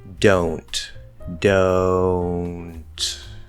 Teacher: i try to make sure there's no nasality in the o